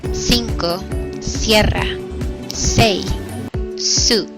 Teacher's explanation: This is the S that English speakers typically use. The blade of the tongue is in light contact with the alveolar ridge and forms a back-to-front groove against it. Air is forced through this little groove, resulting in hissiness.